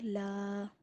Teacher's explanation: الف کا کوئی مخرج نہیں ہوتا، منہ کے خالی حصے سے الف ادا ہوتا ہے۔ الف سے پہلے زبر، حروف مدہ تھوڑا کھینچ کر پڑھیں گے۔